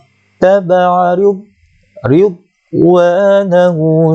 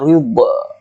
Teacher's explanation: Tak ada qalqalah kat situ. Sebab dad bukan huruf qalqalah.